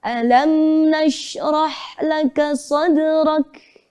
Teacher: Nada yang pertama naik.